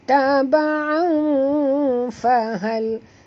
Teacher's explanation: Sekali lagi kita jumpa tanwin bertemu dengan fa, ikhfa hakiki, dengung 2 harakat dan sembunyikan bunyi tanwin ke dalam huruf fa